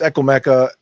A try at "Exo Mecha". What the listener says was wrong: Exo Mecha? You keep saying Echo Mecha, right?